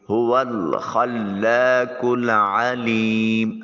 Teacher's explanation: عین کو وسط حلق سے ادا کریں گے۔ یا ساکن ہے، ما قبل لام کے نیچے زیر ہے، یا جو ہے وہ مدہ ہوگی، اس کو ایک الف کے قائم مقام لمبا کریں گے۔ میم کے اوپر جو ہے وہ وقف کی وجہ سے مد وقفی آئے گی، اس کو تھوڑا سا لمبا کر کے ادا کریں گے۔